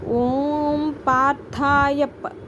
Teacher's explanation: పార్థాయ అన్నాక 2 లిప్స్ని కలిపితే మీకు పి అనే సౌండ్ వచ్చేస్తుంది